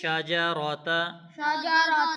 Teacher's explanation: جیم کے بعد را کو موٹا پڑھیں گے جب زبر اور پیش آ جائے تو را کو موٹا پڑھا جاتا ہے